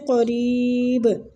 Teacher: فَإِنِّی نون مشدد پہ ادھر بھی غنہ اور کھینچیں گے بھی یا مد کی وجہ سے، قریب با پہ قلقلہ، را کے آگے یا مد ہو رہی ہے، را کو کھینچیں گے